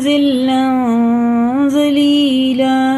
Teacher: اس میں جو نون کی آواز آتی ہے دو زبر میں، اس کو ناک میں چھپا کے پڑھنا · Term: اخفا